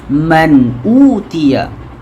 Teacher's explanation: nun sakinah di situ bertemu dengan hamzah ataupun alif, jadi bacanya tak dengung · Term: tidak dengung